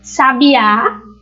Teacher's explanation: O hiato são quando eu tenho duas vogais na mesma palavra, porém elas estão separadas aí, elas estão em sílabas diferentes, elas não ficam juntas.